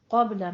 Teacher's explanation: क़ब्ल में कौफ को पुर और बा पे कलकला करना है